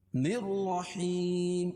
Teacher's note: یا ساکن سے پہلے ہا کے نیچے زیر ہے تو یہ مدہ، اس کو ایک الف کے برابر کھینچ کے پڑھیں گے